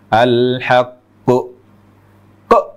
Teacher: nutup pita suara itu berarti kita menambah Hamzah